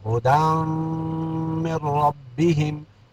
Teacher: علی ہدی من ربہم، ہدی اصل میں ہدن، دال نون زبر دن تھا، تو یہاں نون تنوین کے بعد کیا آ گیا؟ میم آ گیا، حروف یرملون میں سے یہاں ادغام مع الغنہ ہو گیا